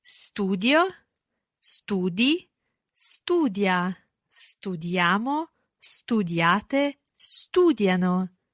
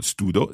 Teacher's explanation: notice that the I sound stays in there in each verb, each part of the conjugation. Studio, it's not studo, studio.